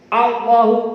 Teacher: Allahu a-nya lafaz Allahu. Yang tebal lamnya lam jalalah, tapi a-nya biasa.